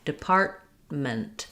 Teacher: So I have stress on the part syllable, depart, but I'm not really letting that T out or this T, department.